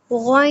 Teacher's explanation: गइन को हम मोटा करते हुए अपने दोनों लिप्स को गोल करते हुए रीड करेंगे।